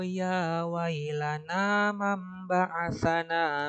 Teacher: mati yang merubah huruf aslinya kan tadi non dan mati nah ketika bertemu huruf ba dia harus dirubah menjadi mim mim mati